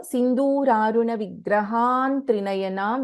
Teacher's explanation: there is ಆನ್ ಅನುಸ್ವಾರ followed by A consonant ಸೊ the ಅನುಸ್ವಾರ will take the form of the last letter of the ತವರ್ಗ which is ವರ್ಗ ಪಂಚಮ rule is applied here ಸೊ ಸಿಂಧೂರಾರುಣ ವಿಗ್ರಹಂ